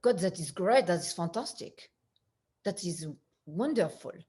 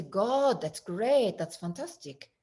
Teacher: the French accent, the vowels are squinched like they are with the Russian